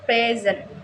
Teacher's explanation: in the word present as a noun, meaning give, the stress is on the first syllable